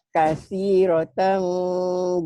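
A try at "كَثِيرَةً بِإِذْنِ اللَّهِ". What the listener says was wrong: bibirnya jangan ngebuka, ditutup bibir atas bawahnya. Kasih rotam. Jadi ikhfa sapawi, iklab itu sama ya. Ikhfa nun mati ketemu fa juga sama. Bunyinya mirip gitu. Bunyi bibir atas bawah dirapetin. Kasih rotam biiznillah. Bilang ember tapi bindeng. Ember. Jangan ember. Jangan dibuka mulutnya ya. Kalau dibuka mulutnya nanti jadi ikhfa hukum nun mati tertanwin.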